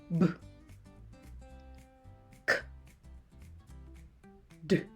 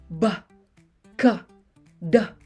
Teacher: Kailangan ay puro ang tunog. Walang nakasabit na ah sa tunog.